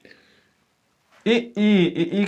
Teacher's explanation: ई का उच्चारण स्थान कहाँ से होता है? तालु से।